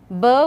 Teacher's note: b would be bilabial, stop but voiced